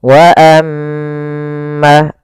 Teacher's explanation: ketika huruf mim berharakat tasydid maka dibaca dengan bacaan gunah. Cara membacanya suara mnya ditahan dua harakat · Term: bacaan gunnah